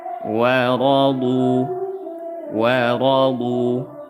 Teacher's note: Wa ra, wa nipis, ra tebal. Ra tebal karena berharokat fathah, wawnya nipis